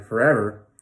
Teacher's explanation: You really only hear the second one clearly. You hear forever, but the first and the third got very small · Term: reduced